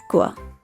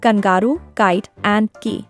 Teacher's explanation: when we say k we lift the back of our tongue to touch the roof of our mouth and then let the air pop out